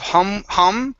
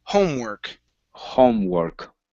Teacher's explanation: make sure that o at the beginning is an o sound instead of hum